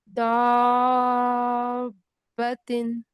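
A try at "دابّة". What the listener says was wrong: नहीं, बा आपको दो लग ही नहीं रहा है, दो है बा इसमें। हाँ तो मैंने क्या बताया ना, तस्दीद पे हमें थोड़ा रुकना है और जाहिर करना है मजबूती से।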